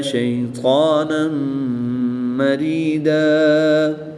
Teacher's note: زبر کی تنوین کے بعد میم حروف یرملون میں سے ہے، تو یہاں پر بھی ادغام مع الغنہ ہوگا، یہاں پر بھی غنہ کر کے پڑھیں گے۔